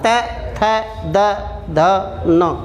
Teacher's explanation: जिह्वा और दांत का सहयोग हो रहा है, तब बोल रहे हैं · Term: दंतव्य